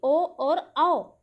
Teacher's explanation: कंठ और ओष्ठ से ये दोनों वर्ण उच्चरित होते हैं, तो इसे कहते हैं ओ दो तो कंठोष्टम।